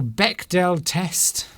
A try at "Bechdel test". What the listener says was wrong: It's the Bechdel test. No, the D is silent.